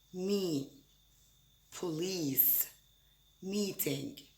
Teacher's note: With the E vowel sound, like in me, police, meeting. The tongue is forward and high in the front of the mouth. The lips are spread, but again, nothing actually touches.